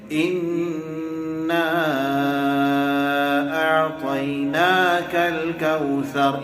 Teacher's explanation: اِنَّا کے اوپر 2 حرکت کے برابر غنہ کیا جائے گا، نا کو کھینچیں گے 4 حرکت کے برابر